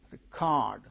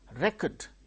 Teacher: when it is used as verb the same word stress changes to second syllable when the same word is used as noun with the same spelling the first syllable gains a stress